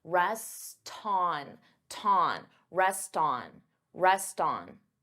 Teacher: rest so here you hear that t because I'm linking the two words together and I'm transferring the T sound onto the vowel